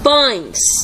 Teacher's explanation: Vemos a letra E, mas a pronúncia sai com o som de I e a entonação fica mais fraca. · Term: semivogal